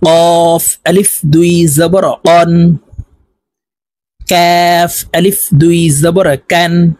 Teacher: এই কাফ হরফ জিহ্বার গোড়া থেকে একটু আগে বাড়াইয়া তার বরাবর উপরের তালুর সঙ্গে লাগাইয়া এই কাফ হরফ উচ্চারণ করতে হবে